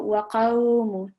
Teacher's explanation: slightly rounded sound when we're joining the qaf with fatha with the waw sakin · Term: lean letter